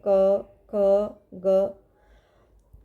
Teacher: जो कंठ से बोले जाते हैं गले से बोले जाते हैं